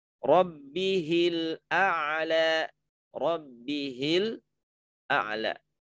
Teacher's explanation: Maka kata hi-nya itu enggak dibaca panjang, tapi dibaca pendek.